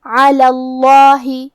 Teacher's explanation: پھر اس کے بعد لفظ الجلالہ مطلب کلمت اللہ کے لام کو ہم موٹی آواز میں پڑھیں گے کیونکہ اس کے پہلے والے حرف ساکن ہیں لیکن اس کے پہلے والے حرف لام پہ زبر ہے تو ہم لفظ الجلالہ کو بھاری آواز میں پڑھیں گے · کلمت علا میں حرف العین کی ادائیگی حلق کے درمیان والے حصے سے ہے